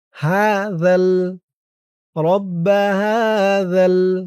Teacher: জিহ্বার মাথা উপরের দাঁতের মাথার সাথে লাগবে। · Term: জালের উচ্চারণটা